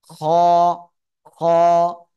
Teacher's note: ঠিক আছে, সিম্পল বাংলায় খ আর এই খ এর মধ্যে পার্থক্য কি? এটা হলো গলার শেষ ভাগ থেকে উচ্চারণ করব